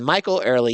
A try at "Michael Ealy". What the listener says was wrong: Michael Ealy. It's not early. It's Ealy.